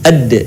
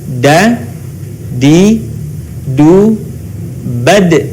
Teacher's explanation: Dalam keadaan mati, huruf da terdengar suaranya memantul.